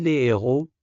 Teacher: Et pas de liaison non plus, on dit les héros, sans faire le son Z. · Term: H aspiré